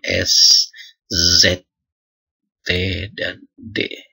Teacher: bunyi karena pertemuan antara daun lidah dengan gusi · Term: lamino alfiol